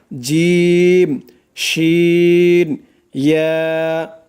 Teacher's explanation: জিহ্বার মধ্যখান তার বরাবর উপরের তালুর সঙ্গে লাগাইয়া উচ্চারিত হয় 3টি অক্ষর